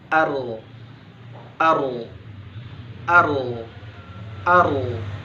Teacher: Tertahannya aliran nafas atau udara ketika mengucapkan hurufnya. Di huruf ro ketika disukunkan, maka seketika udara tidak mengalir, tidak ada hembusan nafas yang keluar. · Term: jahru